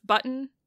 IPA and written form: bʌt.n (button)